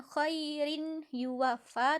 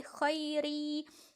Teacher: idgham bighunnah makanya dia bukan khoirin yuwaffa tapi khairi kasrohtain nya ketika diucapkan seolah-olah dia hanya kasrah bukan kasrohtain karena dia sudah melebur